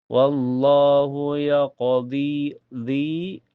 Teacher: karena ada ya sukun sebelumnya harokat kasrah di dhi dibaca panjang 2 harokat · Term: matabi'i